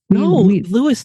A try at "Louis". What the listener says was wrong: his name His name is spelled Louis, not Lewis. Louis. You're literally pronouncing the name wrong. He's a Frenchman. Louis. Louis.